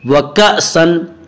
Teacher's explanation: व कअसन हमज़ा झटके के साथ पढ़ा जाएगा